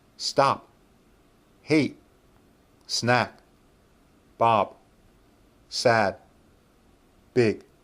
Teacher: I'm shaping my mouth for p, t, k, b, d, g, but I'm not making these sounds. Instead, I'm stopping the vowel sound. But when I stop that vowel sound, my mouth is in the shape of the final consonant sound.